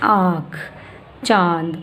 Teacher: जिन वर्णों के ऊपर अनुनासिक चंद्र बिंदु लगा रहता है उसकी आवाज़ नाक, मुंह दोनों से वायु बाहर आती है।